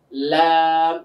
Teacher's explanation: জিহ্বার আগাটা সামনের উপরে দুই দাঁতের গোড়ার সঙ্গে গিয়ে লাগবে